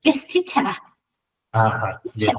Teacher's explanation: en el inglés británico las R al final de las palabras no se pronuncian